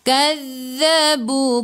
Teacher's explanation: hujung lidah keluar pada gigi depan, tekan ke dalam zal ada sabdu